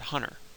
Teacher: if you say the word hunter, there's no T at all in that word